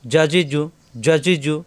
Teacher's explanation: তালুতে জিম শক্ত করে উচ্চারণ করতে হয়।